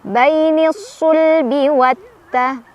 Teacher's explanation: Bainisul bi watta ada alif lam syamsiyah karena ada alif lam bertemu huruf syamsiyah yaitu ta. Cara bacanya alif lamnya dilewat, langsung baca ke ta ya sambil ditekan. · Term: idgham syamsiyah